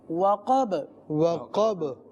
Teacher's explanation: اب یہاں پر بھی آخر میں با، اور با جب ساکن ہوگی تو اس پہ قلقلہ ہوتا ہے